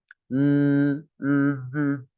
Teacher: Suara yang bersumber dari rongga hidung. Khayshum namanya. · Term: gunnah